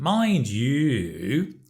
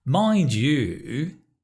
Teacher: So it's a falling rising.